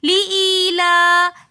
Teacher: لام کے اوپر کھڑا زبر ہے تو اس لیے ہم نے لإیلا لام کو ہم نے ایک الف کی مقدار کھینچ کر پڑھا